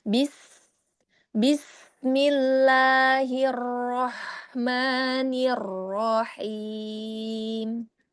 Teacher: Ada sinnya, ada sofirnya tetap walaupun dia sukun tapi sofirnya harus tetap teralir